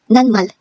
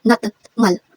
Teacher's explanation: T, if kasunod niya ay si M, ay magiging N sound.